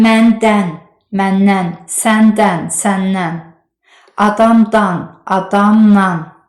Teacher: Əgər dandən şəkilçisindən əvvəl n bir də m samitləri varsa, dandən nan nən kimi tələffüz olunacaq.